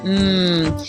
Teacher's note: Bob these need to contrast in addition to the bilabial stops we also have a nasal hmm where both lips come together